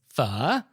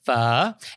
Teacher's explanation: it's a low falling and then Rising tone kind of like Mandarin's thirdd tone so it sounds like you're